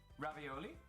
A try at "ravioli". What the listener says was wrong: You guys put the accent on the wrong vowel. It's not ravioli, it's ravioli. It's on the O. Ravioli. It's an open O.